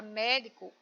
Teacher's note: Na palavra médico, o mé é a sílaba tônica, portanto, a sílaba mais forte